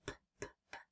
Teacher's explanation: Put your hands on your throat and say pp. You don't feel any buzzing. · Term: unvoiced